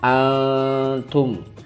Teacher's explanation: Antum nun sukun bertemu ta, itu adalah ikhfa, dibaca samar.